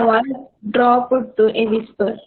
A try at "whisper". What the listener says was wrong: Don't say whisperer, right? So just say whisper.